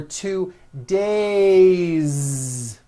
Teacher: It's not days, unvoiced. It's days with a voiced Z ending.